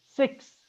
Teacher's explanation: this X, it represents 2 sounds, K and S